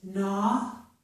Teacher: G plus N at the beginning of a word only sounds like N, the G is silent